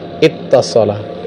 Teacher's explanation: Iwtasola itu kan wawu, wawu dengan ta itu mutaqariban, wawu itu safawi, sebenarnya ta itu kan di bagian apa, gigi seri, lidah dengan gigi seri, ta, ya, sehingga diidghamkan wawunya kepada ta'nya, ittasala. Adapun kalau dari madada menjadi madda itu karena memang sejenis gitu.